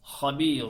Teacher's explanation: gelirse ne olur İklap diyoruz asıl okunuşu iklab iklab demek yani kalp etmek kalp dönüştürmek Nunu Mime dönüştürüyoruz Habir Normalde sonu nundu ancak b harfini gördüğü için B'ye uğradığı